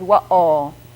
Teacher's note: that has in the middle of it a consonant that doesn't exist in English it's called glottal stop so we don't say WOW with just vowels after the w